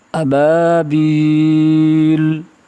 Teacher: با کا ادائیگی ہے دونوں ہونٹوں کو ملانے سے